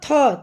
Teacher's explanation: महाप्राण मुख से अधिक हवा निकले